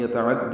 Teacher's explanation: عین وسط حلق سے ادا کریں گے، عین کو دال سے ملائیں گے۔